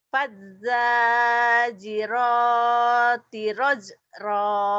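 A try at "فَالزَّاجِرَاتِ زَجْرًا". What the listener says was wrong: Bukan rajra. Ini kan ada titiknya. Zajra.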